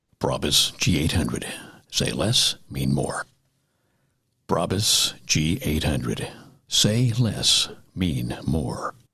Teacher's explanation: He was actually sounding breathless, almost breathless.